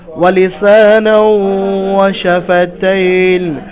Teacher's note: নুনকে একালিফ পরিমাণ ওয়াওয়ের সঙ্গে মিলিয়ে গুন্না সহ পড়তে হবে একালিফ পরিমাণ। ওয়ালিসানাও ওয়াশাফাতাইন, ওয়াশাফাতাইন, এখানে তাইনে একালিফ পরিমাণ টান হবে,